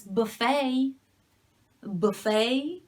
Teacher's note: if the stress is on the second syllable, it's buffet.